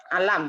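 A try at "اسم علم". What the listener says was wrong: Ismul alam. Ismul alam. Jangan dipanjangkan ainnya, bukan ismul alam, bukan. Ismul alam. Ismul alam.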